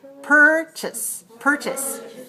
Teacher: purchase is a verb with two syllable stress the first one remember the second syllable is weak